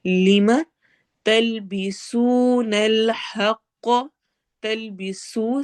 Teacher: سین میں سٹی والی آواز ہے اور وہ مدہ ہو رہا ہے.